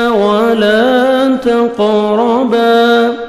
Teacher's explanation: قاف حروف قلقلہ میں سے ہے. ڈبل ساؤنڈ آئے گا. جب بھی ساکن آئیں گے یہ 5 لیٹرز قاف طا با جیم دال تو ڈبل ساؤنڈ آتا ہے.